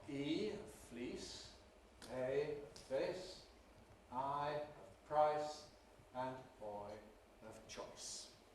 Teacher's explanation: the long vowel and diphthongs which move towards the close front area, the I area of the vowel space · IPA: /iː/